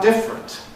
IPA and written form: ˈdɪfrənt (different)